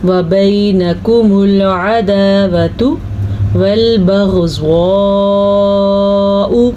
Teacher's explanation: غین کے تلفظ کا آپ نے خیال رکھنا ہے کہ یہ حلق سے نکلتا ہے اور زوات کو آپ نے پر پڑھنا ہے اور مد کا بھی خیال رکھنا ہے.